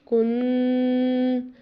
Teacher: کاف سیدھا پیش نون ساکن کن، جو ہم نے آواز کو دبایا کن، یہی غنہ ہے۔ اسے تقریباً 1 الف کے برابر لمبا یا کھینچ کے پڑھنا چاہیے تاکہ محسوس ہو کے غنہ کیا ہے ہم نے